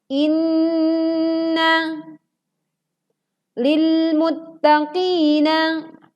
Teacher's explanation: Perhatikan teman-teman, saat kita membaca inna karena terdapat nun bertasydid, maka sempurnakan bacaannya dengan memasukkan suara ke rongga hidung dengan sempurna. Kira-kira ditahan 3 ketukan atau 3 harokat saat kita menekan huruf nun bertasydid.